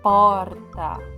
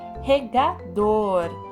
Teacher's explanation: dor é a sílaba que nós pronunciamos com mais força com mais intensidade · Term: sílaba tônica